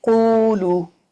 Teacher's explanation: ہونٹ تو راؤنڈ ہو رہے ہیں لیکن ایکچولی یہ مد ہے تو مد کی جو ساؤنڈ ہے وہ خالی حصے سے آ رہی ہے. او خالی حصے سے آ رہی منہ کے خالی حصے سے.